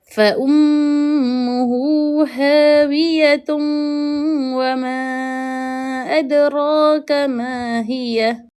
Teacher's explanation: Hukumnya adalah idgham ma'al ghunnah, di mana kita nak kena memasukkan bunyi waw ke dalam bunyi tanwin tadi beserta dengung.